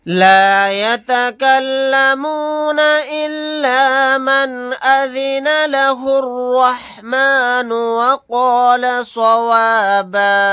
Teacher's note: यहाँ पर नून साकिन के बाद हमज़ा आ गया, इज़हार हलक़ी का कायदा होगा, यहाँ पर इज़हार करके पढ़ेंगे। हालत वक्फ में बा अलिफ के साथ एक ज़बर को पढ़ेंगे।